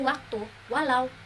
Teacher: semivokal bilabial mencakup konsonan we